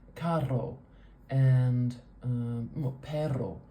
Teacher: It's a really quick little beating of the tongue right behind the teeth, right on the alveolar ridge